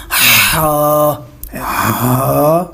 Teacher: ہا جو ہے یہ حلق کے درمیان والے حصے سے ادا ہوتا ہے